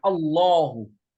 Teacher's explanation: هنا تكون اللام سبقت بضمة فهنا تكون مفخمة. وكذلك إذا سبقت بفتحة، إذا سبقت لام لفظ الجلالة بفتحة أيضا فإنها تفخم.